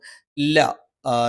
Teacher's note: ല, നാവിന്റെ അറ്റം മേലെ മുൻപല്ലിന്റെ മോണയിൽ.